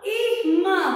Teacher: Com a sílaba tônica, mã, né? Nós pronunciamos com mais força, com mais intensidade.